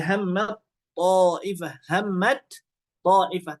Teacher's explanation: menghilangkan huruf pertama kepada yang kedua dan huruf yang pertama ini hilang menjadi bunyinya menjadi huruf yang kedua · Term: al-idgham